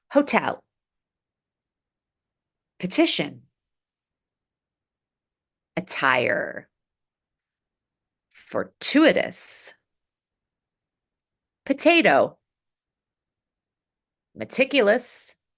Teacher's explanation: we're just going to practice popping the T when it's at the beginning of the strongest syllable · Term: true T